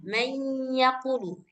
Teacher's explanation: Misalkan kalau huruf misalkan setelah nun sukun itu ada huruf ya, maka suara nun sukun itu sudah enggak kedengaran lagi. Sudah melebur ke huruf ya, maka langsung dibaca ya gitu. Misalkan may yaqulu. · Misalkan mayyaqulu. Jadi suara nunnya memang sudah hilang sama sekali. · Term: idgham